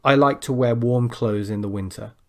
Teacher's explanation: there i dropped the th and you probably didn't even notice · a lot of native speakers, when they're speaking quickly, they will, without realizing it, drop the th sound.